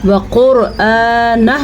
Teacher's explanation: جمعہ، عین جو ہے اس کی تلفظ کا خاص خیال رکھنا ہے، اور ہاں الٹا پیش ہو، اس کو ذرا کھینچ کے پڑھنا ہے، ٹھیک ہے۔ وقرآنہ، وقرآنہ میں را کو پر پڑھا جائے گا کیونکہ را کے اوپر ساکن ہے، لیکن را سے پہلے حرف کے اوپر پیش ہے، اسی لیے را پر پڑھا جائے گا۔